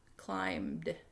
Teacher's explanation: We don't hear that B. It's a silent. The M and B together kind of are silent.